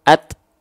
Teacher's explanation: penghususan untuk huruf ta hanya berupa percikan-percikan nafas saja. Kalau dia lebih dari kadar percikan sampai mengalir, maka disebutnya takalluf. Takalluf itu berlebihan, mukammalan min ghairi ma takallufi.